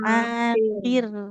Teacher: Roknya tipis. Karena roknya sukun didahului kasroh, jadinya tipis.